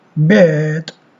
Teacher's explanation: This is a mid-central vowel which is used in most English accents as a hesitation sound, written er, but which many learners find difficult to copy. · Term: long vowel